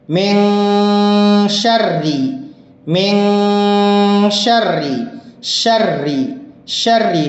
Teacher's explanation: اگر را پر زیر ہو تو را باریک پڑھی جاتی ہے